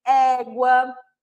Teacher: Então, eu tenho o som da letra E aberto, ó. Como em égua.